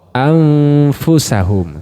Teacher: ketika Nun sukunnya itu kita dengungkan ke huruf Fa maka sudah siap-siap di makhrajnya fa makudnya fa di mana ujung gigi seri atas bertemu dengan perut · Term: ikhfa